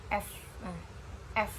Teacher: bibir bawah kita menyatu dengan gigi atas atau dental. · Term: labiodental